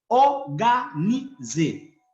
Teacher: en criollo eliminamos la R y nos quedamos con la O.